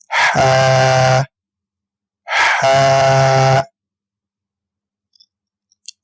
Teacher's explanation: ہا حلق کے درمیان والے حصے سے ہم ہا کو ادا کریں گے